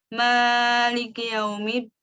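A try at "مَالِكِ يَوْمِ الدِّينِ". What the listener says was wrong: Bidun ziyadah. Maliki kasratu kaf.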